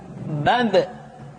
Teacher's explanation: ba dikeluarkan dengan cara merapatkan kedua bibir kita ba bi bu ketika mati maka terdengar suara pantulan